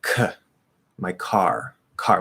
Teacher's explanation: It's a content word, single syllable, stressed. There's a K at the start of a stressed syllable, spelled with a C, but it's a K sound. So that means it's going to be nice and strong. · We hear that little bit of breath